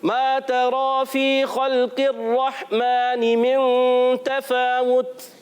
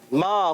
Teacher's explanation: अलिफ मद्दा है, एक अलिफ खींच कर अदा करेंगे।